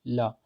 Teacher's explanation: पार्श्विक व्यंजन का मतलब क्या हुआ कि इसमें वायु जो है वो जिह्वा के बगल से गुजरती है, पार्श्व से गुजरती है। जैसे आप ला बोलिए, ला, तो देखिए आप ला बोलेंगे तो आपकी जीभ थोड़ी सी उड़ जाएगी और हवा बाहर निकलेगी।